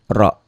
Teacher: Ra-nya dibaca double. Ra-nya dibaca tebal karena baris di atas. Ra. Tabkhim.